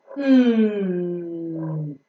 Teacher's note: close to each other and closing or blocking the oral cavity the air coming out the lungs has to pass through the nose and hence the soft palate is lowered in order to block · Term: nasal sound